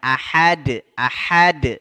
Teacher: H yang besar di tenggorokan bagian bawah adapun yang ahad ahad h-nya yang tenggorokan bagian tengah